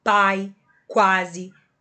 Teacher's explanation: O som sai pela minha garganta, não tem a contribuição do nariz. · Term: ditongo oral